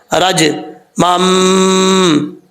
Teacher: زبان کا درمیان اوپر والے تالو سے لگے تو جیم پڑھا جائے گا. رج مم, یہاں پر دو زبر ہیں, دو زبر کے بعد چھوٹا میم ہے, یہاں پہ ایک الف کی مقدار غنہ کر کے پڑھنا ہے آپ نے.